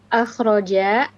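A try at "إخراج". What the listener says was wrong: tapi jnya tidak panjang ya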